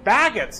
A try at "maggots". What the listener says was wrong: Did you say baggots? You said baggots with a B.